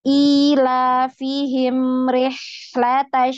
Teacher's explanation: Mim ini ada alirannya tidak sepanjang ha dan shin ya.